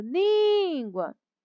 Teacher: a sílaba mais forte é lin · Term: sílaba tônica